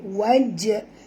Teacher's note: jim di sini dia mati di tengah-tengah kalimah, jadi kita kena lantunkan dia dengan lantunan kecil